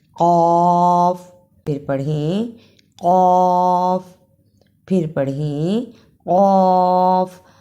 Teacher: قاف کی جگہ پر کاف کی آواز نہیں آنی چاہیے. قاف کو موٹا پڑھنا ہے